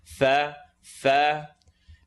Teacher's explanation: fa, light letter, letters of the lips.